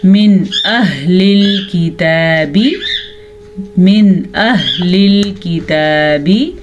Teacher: नून साकिन को हम ज़ाहिर करके पढ़ेंगे, बग़ैर गुन्ने के पढ़ेंगे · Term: इजहार